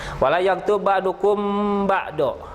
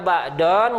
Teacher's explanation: Ai mad artinya panjang, ari iwad pengganti. Harusnya ba'don karena diberhentikan jadi ba'do diganti ku patah. Itu namanya mad iwad.